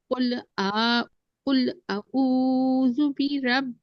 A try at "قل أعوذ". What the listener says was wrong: آ الگ ہے او الگ ہے، ٹھیک ہے نا، دونوں کو مکس نہیں کریں. آ الگ پڑھ لیں. او نکال. قل میں لام میں قلقلہ نہیں ہے نا، قل کریں گے